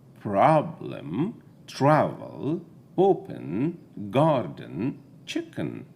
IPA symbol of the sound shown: ə